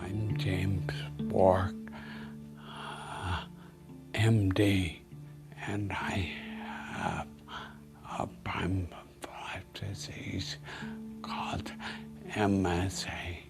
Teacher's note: you can see how breathless and whispery his voice was without any of the hesitations that we had heard previously